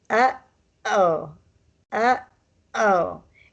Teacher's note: It's like you're slightly strangling the O. Your throat is constricted a little bit. Like that. Sort of like the vowel has constipation or something.